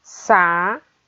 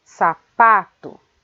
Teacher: A sílaba pronunciada com mais força é a sílaba pá